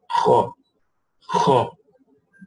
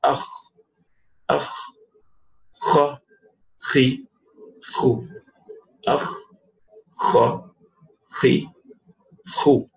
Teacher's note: it originates from the root of the tongue along with the soft palate. The same origination, the root of the tongue with the soft palate.